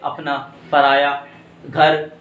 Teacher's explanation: इनका उच्चारण करते समय नासिका मार्ग बिल्कुल बंद रह जाता है, मतलब नाक से हवा बाहर नहीं निकलेगी या श्वास बाहर नहीं निकलेगी, केवल कहां से निकलेगी, मुख से बाहर निकलेगी। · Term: निरअनुनासिक